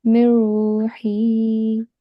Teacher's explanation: because in ra we don't make the gunna sound, we will just merge the previous letter with the ra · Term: Idgham bila gunna